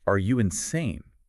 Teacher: use a rising tone to criticize